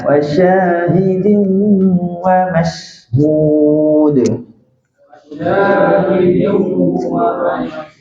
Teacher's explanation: Bila sebut shin turunkan pangkal lidah.